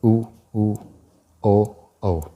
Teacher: इनके उच्चारण में ओष्ठ की आकृति गोल हो जाती है, अर्थात क्या उच्चारण करते हैं तो होठ गोल हो जाती हैं, जैसे उ, ओ, औ। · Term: वर्तमुखी